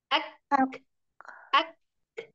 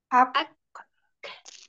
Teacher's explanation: Ya, ada angin yang keluarnya. Jadi tekan baru keluarkan anginnya.